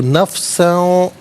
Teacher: وَقَتَلْتَ نَفْسًا، نفسن میں سین پر 2 زبر کی تنوین ہے، تنوین کے بعد فا آ رہا ہے حرف اخفا، تو تنوین کو یہاں اخفا کے ساتھ ادا کیا جائے گا، یعنی یہاں پر اخفا کہتے ہیں غنہ، ناک میں آواز لے جا کر گنگنانا